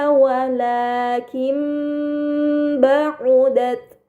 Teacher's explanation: Ini dinamakan iklab. Maka nun sukun dibaca mim dengan gunnah yang dipanjangkan.